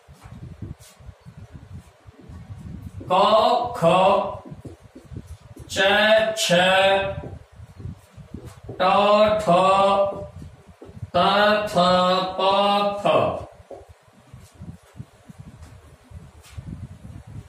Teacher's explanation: स्वर तंत्री में कंपन नहीं होता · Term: अघोष वर्ण